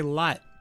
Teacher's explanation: Even when I say lot, you don't hear the T, right?